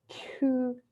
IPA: tɕʰu